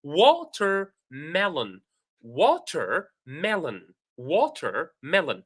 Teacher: So, the stressed syllables are wa and me. Wa, me. Okay.